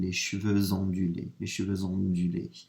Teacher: So, for example, on hair, if I wanted to say curly hair, and I use the word ondulé, starts with an O, ondulé, I would say les cheveux ondulés. So I'm putting a Z in, because I'm running actually that X into the O of ondulé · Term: liaison